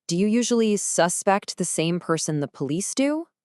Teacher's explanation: the energy is all on the second half of the word suspect